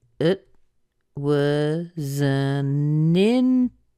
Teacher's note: the reason you hear the T is because there's a consonant after it not a vowel